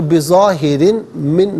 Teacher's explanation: دو زیر کی تنوین کو من کی میم کے ساتھ ملائیں گے، میم کی آواز کو غنّے کے ساتھ ادا کریں گے۔ یہاں یرمنون کا جو قاعدہ ہے وہ اپلائی کیا جائے گا، تو بظاہرن من نہیں، بظاہرن من۔